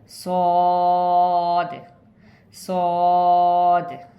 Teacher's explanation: ज़ुबान की नोक को नीचे वाली दांतों की जड़ में टच करते हुए थोड़ा मोटा पढ़ेंगे